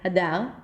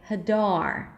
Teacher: I prolonged it and I went higher in pitch